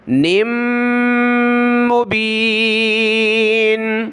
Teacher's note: نون کو میم کے ساتھ ملائیں گے، ناک میں آواز پیدا کریں گے، نون میم دو زیر، نم مبین۔